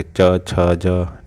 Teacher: तालु भाग जो तालु से टक रही है, छ, जीव अपने आप चिपक जा रही है तालु से जाके,